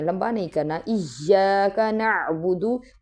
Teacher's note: اس کو بعض لوگ نعبدو لمبا کر دیتے ہیں، لمبا نہیں کرنا